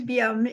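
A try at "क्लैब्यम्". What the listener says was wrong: Kleibium. No, because the adjective form is liba, and it makes the vridhi from the E to I, so kleibium.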